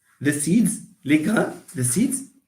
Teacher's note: when you pronounce the word like seed you feel that you block the air from coming to the nose